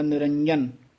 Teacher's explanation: ਥੋੜਾ ਜਿਹਾ ਜੱਜੇ ਨੂੰ ਕੱਸ ਕੇ ਬੋਲਾਂਗੇ ਤਾਂ ਇਹ ਸ਼ੁੱਧ ਬੋਲਿਆ ਜਾਏਗਾ, ਨਹੀਂ ਤਾਂ ਯਈਆ ਬੋਲਿਆ ਜਾਏਗਾ